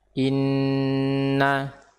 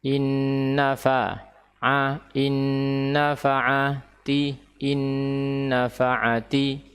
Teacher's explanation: nun sakinah idgham ke nun fathah atau nun syaddah wa fathah bi gunnah harakatain, dengan gunnah 2 harakat